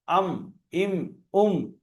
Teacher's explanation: আর মিম উচ্চারণ হয় দুই ঠোঁটের ভিজে অংশ